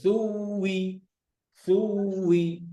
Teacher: সুই মানে ইয়া হয়ে যায়, ঠোঁট গোল করে